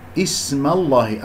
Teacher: والسين يجري فيها الصوت والنفس